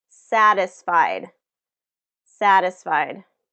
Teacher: in this satisfied, 3 syllables, and it's the first syllable that's getting the stress.